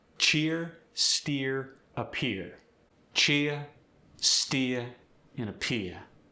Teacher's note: Ear goes to ia.